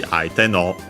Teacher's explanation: But yeah, no, usually here, yeah, should be aite no, low, high, high, high, instead of low, high, high, low. So instead of the no being low, it stays high.